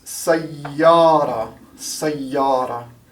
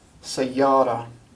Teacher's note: You can notice how I hold out the Y here.